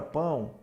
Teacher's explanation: Observe que esse o tem som desse u semivocal